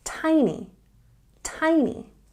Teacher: we have a stress on the first syllable here